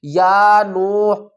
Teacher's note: واو ساکن ہے، اس سے پہلے پیش ہے، یہ بھی واو مدہ ہے، اور اس کو بھی ہم ایک الف کی مقدار کھینچ کر پڑھیں گے